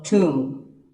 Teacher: It's often wrongly pronounced as tomb, but the B is silent and the O is pronounced with an oo sound